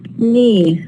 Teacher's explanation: the ka is written as a letter, but it's not produced